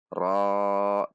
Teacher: ro fathah bertemu Alif Mad Thobi'i dua harakat RO dua harakat dibaca dengan tidak membulatkan bibir namun dengan menegangkan pangkal lidah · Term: huruf ro